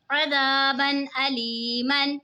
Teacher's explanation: लेकिन अब देखें यहाँ पे दो ज़बर की तनवीन के बाद हुरूफ़े हल्की का हमज़ा आ रहा है तो यहाँ पे इज़हार होगा यानी हमने गुन्ना नहीं करना। जो दो ज़बर की तनवीन है उसकी आवाज़ को ज़ाहिर करके पढ़ेंगे।